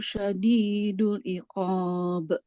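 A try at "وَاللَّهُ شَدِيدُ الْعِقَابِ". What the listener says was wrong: Syadidul iqab. Lamnya harus jelas dulu, harus kedengaran. Syadidul iqab.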